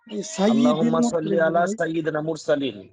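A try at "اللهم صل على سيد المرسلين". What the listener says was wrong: সাইয়্যিদিল নুন নাই তো ভাই, সাইয়্যিদিল। এই শব্দের উচ্চারণ হবে আল্লাহুম্মা সাল্লি আলা সাইয়্যিদিল মুরসালিন।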